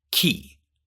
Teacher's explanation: But the middle of your tongue is free to do whatever it wants, and in this case, because a high E sound is coming next, it raises up in anticipation, giving you that higher pitched K sound. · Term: palatalization